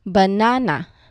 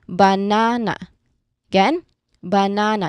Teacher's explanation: when we say this word naturally in English we don't stress the first or the last part so we stress the middle syllable